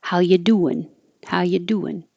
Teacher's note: you take off the G and then that changes the vowel so it's no longer an e it's an e and the